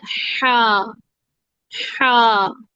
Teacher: ہا کے اندر رگڑ کھاتی ہوئی سانس آتی ہے